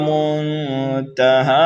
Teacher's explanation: ہا کو کھینچیں گے ایک الف کے برابر